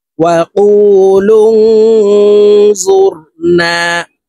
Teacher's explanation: নুন সাকিনের পরে ইকফার হরফ জ আসছে, এই কারণে এই নুন সাকিনকে নাকের ভিতরে লুকাইয়া গুন্নার সহিত পড়ব।